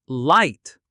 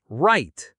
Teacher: For L, touch the roof of your mouth with your tongue tip. For R, pull your tongue back.